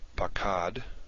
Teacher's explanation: I say them both a, as in the Hebrew word pakad. Pakad has, the first vowel is the kametz, the second vowel is the patach. I pronounce them the same.